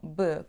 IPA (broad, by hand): b